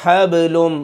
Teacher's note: با کے اوپر سکون ہے، قلقلہ پیدا کریں گے